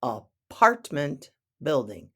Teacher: the emphasis is on the second syllable in apartment the first a is pronounced like a uh because of the